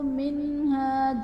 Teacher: منہا میں نون ساکن کے بعد حروف حلقی میں سے ہاں ہے، تو یہاں پر اظہار کا قاعدہ ہوگا، یعنی نون ساکن میں ہم غنہ نہیں کریں گے